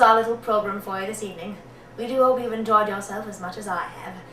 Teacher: she doesn't hit the R's as much as some of the other American ones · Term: British non-emphasized R sound